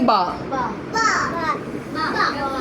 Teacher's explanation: तो बा का मखरज है कि बा दोनों होठों के तर हिस्से से अदा होता है।